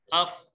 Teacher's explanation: فا, فا کی ادائیگی کہاں سے ہے؟ اوپر والے دانت اور نیچے والے ہونٹ